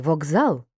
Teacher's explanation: глухий к перед дзвінким з теж став дзвінким